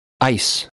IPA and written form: aɪs (ice)